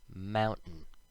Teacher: when we speak slowly, we might say the T, like in mountain, but when we speak quickly, we take out the T sound, and it sounds like mountain. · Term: skip the T sound